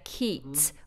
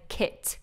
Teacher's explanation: The short vowel has to remain very short, and what I hear is a lot of elongating. So I hear keet rather than kit.